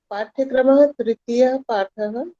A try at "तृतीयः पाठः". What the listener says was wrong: पाठ्यक्रमः इति न वदतु। तृतीयः पाठः।